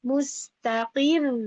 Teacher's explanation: suaranya naik Tapi tetap tipis r-nya